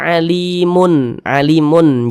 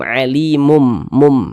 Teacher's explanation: Jadi jangan dibaca alimun, alimun, jangan menggunakan nun, jangan dibaca alimun, tapi dibaca menggunakan mim, alimum, mum. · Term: iqlab